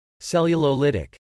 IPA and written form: ˌsɛl yə loʊˈlɪt ɪk (Cellulolytic)